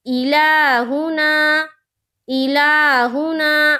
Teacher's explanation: ہو ہا کے اوپر پیش کی حرکت ہے، پیش کو جلدی پڑھیں، تھوڑا بھی نہ کھینچیں، معروف پڑھیں، مجہول آواز سے بچیں، جیسے الہ، الہ، نا، الف خالی سے پہلے زبر ہے، الف مدہ ہوگا، الف مدہ کو ایک الف کے برابر کھینچ کر پڑھیں گے